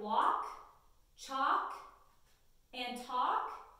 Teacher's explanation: words like walk chalk and talk we have the L that is silent so that a is still going to make that sound it's